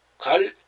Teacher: 자, 갈 하고 길 이렇게 나죠. 갈 길이 아니라 갈 리을 뒤에 여린 히읗이 붙어서 갈 이렇게 빨리 끊어지게 합니다